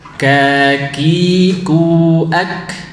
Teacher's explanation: Adapun kaf itu bertemu dengan langit-langit bagian lunak dan keras secara bersamaan. Ya, kaf sedikit maju dari qaf, ya, menyentuh atau menekan langit-langit bagian lunak dan keras secara bersamaan